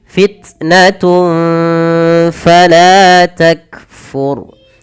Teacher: yang paling menonjol kita baca dengan sifat syiddah dan hamas, yaitu langkah pertama tahan suaranya fit, baru alirkan nafas.